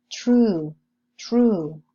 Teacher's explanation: Let's see examples with a voiceless post-alveolar affricate first.